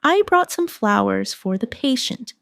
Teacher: Stress flowers to show the gesture.